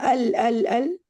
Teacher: जब आप अल मगदूबी बोल रही हैं अल अल अल तो हमजा की आवाज आ रही है ना? इसका मतलब अलिफ तो नहीं हो सकता।